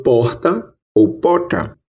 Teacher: temos a pronúncia de uma fricativa aspirada R